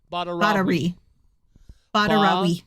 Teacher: they say the syllable at the end there so quickly that the U kind of just disappears or at least the more traditional.